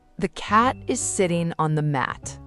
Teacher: Cat, sitting, mat, those are your content words and they get the stress. The, is, on, the, those get compressed and quiet.